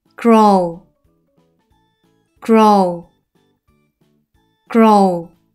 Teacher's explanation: 이중 모음이에요. 뒤에 오는 W는 소리가 나지 않고 앞에 오는 O의 장모음 소리가 나서 오우 소리가 나요. 그는 혼자 소리 나서 그, 오는 르와 같이 소리 나서 로, 우도 혼자 소리 나서 우, 그로우.